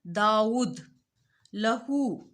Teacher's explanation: उल्टी पेश की अदायगी में खिंचाव होगा